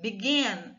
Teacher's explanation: a sílaba forte é o gin, begin. Então, a gente vai dobrar o N, beginning, começando, tá?